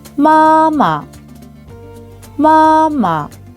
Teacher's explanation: 앞에 일성이 올 때는 그 일성보다 낮은 내 단계에서 발음이 됩니다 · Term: 경성